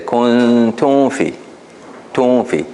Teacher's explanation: the common mistake here is that they would basically merge the mim into the fa. They would say kuntum fi, tum fi.